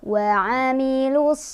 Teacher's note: Ada alif lam bertemu dengan huruf syamsiah yaitu shad. Cara bacanya dari lu langsung masuk ke shad, langsung diidghamkan ke shad, ke huruf syamsiahnya. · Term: idgham syamsiah